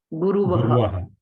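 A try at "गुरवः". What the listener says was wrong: Guravaha, not Guruvaha. Guravaha. Guruhu, Guru, Guravaha.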